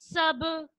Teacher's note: यहाँ बा आ रहा है और साकिन हालत में है तो यहाँ पे कलकला होगा, यानी आवाज पलटकर वापस आएगी।